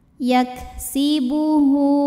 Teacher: Maka kita bunyikan panjang haknya 2 harokat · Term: madsilah qasirah